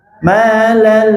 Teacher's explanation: Lamnya tasydid, tong dipanjangkan.